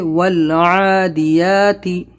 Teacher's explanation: تو دیکھیے یہاں پر ہے والعادیاتی، اس کو ول اور عا نکالنا ہے، دیاتی یا پہ کھڑا زبر کھینچنا ہے اور تی کو لمبا نہیں کرنا ہے